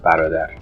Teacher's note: But in Persian, the word barodar, which means brother, this ra is actually flapped or tapped